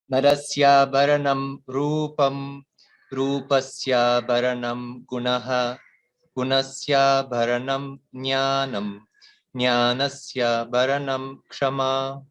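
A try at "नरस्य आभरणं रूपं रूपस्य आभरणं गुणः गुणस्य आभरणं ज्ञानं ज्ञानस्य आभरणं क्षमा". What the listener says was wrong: So please focus on the Mahapranam. So Narasya Bharanam Bha. Similarly, everywhere in the Abharanam, Bha is a Mahaprana.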